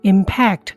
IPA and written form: ɪmˈpækt (Impact)